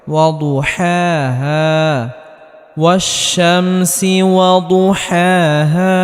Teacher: জবরের বাম পাশে খালি আলিফ মাদের হরফ একালি পরিমাণ লম্বা করে টানতে হবে